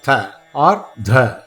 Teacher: In tavarga, when you say tha, citing tha, dha, what happens is the tongue touches the base of the teeth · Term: dental